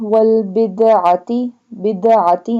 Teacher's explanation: pronounce ayn from the middle part of throat